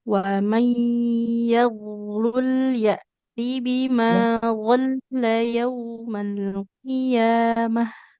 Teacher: tidak panjang lamnya tapi bertasydid